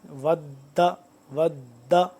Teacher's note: یہاں پہ کھچاؤ پیدا ہو رہا ہے تشدید ہونے کی وجہ سے